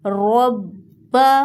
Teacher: را کو موٹا پڑھیں گے اور با مشدد پر زور دیں گے۔